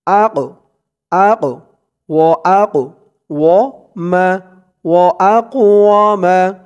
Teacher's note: এই কফটা হচ্ছে কলকলার হরফ, ধাক্কা দিয়ে পড়তে হবে